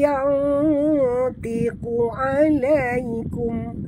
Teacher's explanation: Apabila huruf nun mati dia bertemu dengan huruf-huruf yang istila, kena tebalkan dengung nun itu. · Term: ikhfa hakiki